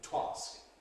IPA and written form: twɑːsk (to ask)